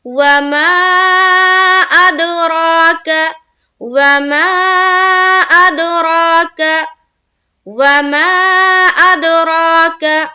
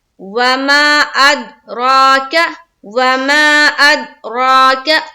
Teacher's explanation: را کو پر رکھتے ہوئے 1 الف کے باقدر کھینچنا بھی ہے